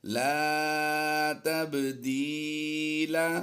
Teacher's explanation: با حروف قلقلہ سے ہے، یہاں پر ساکن ہے اور اسے قلقلہ یعنی جنبش دے کر پڑھیں گے